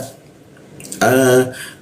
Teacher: ini hamzah atau alif ya posisinya di tenggorokan bagian bawah